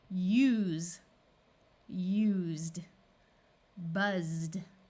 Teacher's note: is going to make the U have its long sound and the S is going to have its voice sound of Z